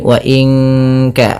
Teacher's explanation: nun mati bertemu Kaf suaranya disamarkan ke Kaf